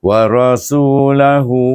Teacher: dibaca dengan mad silah qasirah. Sama macam asli bacaannya. Panjangnya dua harakat. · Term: mat silah qasirah